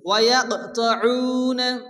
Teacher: এখানে কফ সাকিন কল করা হালকা ধাক্কা দিয়ে পড়তে হবে